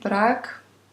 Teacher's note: V besedi prak gre ponovno za zveneči nezvočnik na koncu besede, ki se torej izgovarja nezveneče